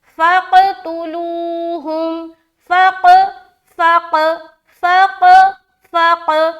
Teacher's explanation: آگے فَقْتُلُوهُمْ، فا قاف زبر فق. اب یہاں پر فا کو قاف سے جب ملا رہے، ظاہر بات ہے قلقلہ کریں گے